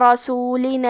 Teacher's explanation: را پہ زبر ہے تو ہم حرف الراء کو موٹی آواز میں پڑھیں گے